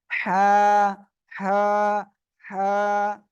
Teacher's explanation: গলার ভিতর থেকে একটা আওয়াজ আসবে, হালকা বাতাস বের করে উচ্চারণ করতে হবে, অর্থাৎ গলাটা চেপে উচ্চারণ করতে হবে।